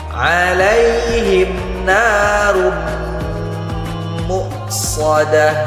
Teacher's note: Perhatikan ada tanwin berjumpa dengan huruf mim, maka hukumnya idgham bi gunnah, harus kita dengungkan 2 harokat.